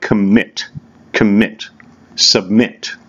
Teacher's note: So the emphasis is on the second syllable